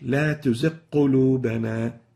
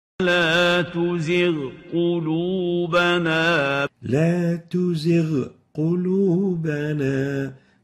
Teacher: So here, in the second example, the ghain followed by the qaf. So some people would tend to eliminate the ghain and directly merge the two letters together, taking the ghain into the qaf and merging it, and that's what we call idgham.